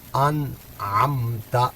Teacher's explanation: یہاں نون ساکن کے بعد عین ہے، یہاں اظہار ہوگا